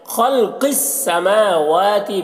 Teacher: میم اور واو دونوں میں کھڑا زبر ہے، دونوں کو ایک الف کے برابر کھینچ کر پڑھیں گے